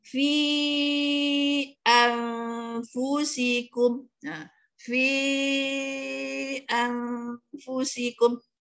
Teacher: Contohnya fi anfusikum, fi anfusikum, antu jangan kita tak dengung, jangan kita baca fi anfusikum, tidaklah betul, tidak bertepatan dengan tajwidnya, iaitu nun mati bertemu dengan fa, maka hukumnya hendaklah didengungkan, iaitu dengung ikhfa hakiki ya.